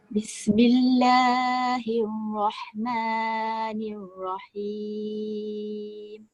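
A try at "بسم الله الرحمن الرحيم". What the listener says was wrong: Bismillah dengan ma tu jangan panjang sangat kalau kita baca. Bismillahirrahman. Dia jadi 3. Bismillahirrahmanirrahim. 2 je.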